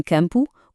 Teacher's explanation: em campo, o am criou o som an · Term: dígrafos nasais